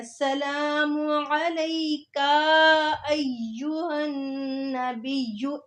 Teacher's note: कुछ लोग अस्सलामु अलैका जो काफ है उसको भी लंबा कर जाते हैं, अस्सलामु अलैका अय्युहन नबिय्यु, ऐसे लंबा कर जाते हैं।